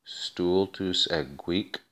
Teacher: we have an elision between ego and huic, because ego ends with a vowel and huic begins with an H. And thus we have long, short, short.